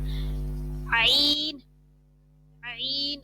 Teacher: عین جو ہے حلق کے درمیان سے نکلے گا